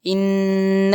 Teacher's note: گنہ آ گیا تو آواز کو ناک کے اندر لے جا کر روک کر پڑھنا ہے